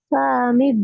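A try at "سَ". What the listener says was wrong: ச சா இல்ல. ச. ஆ.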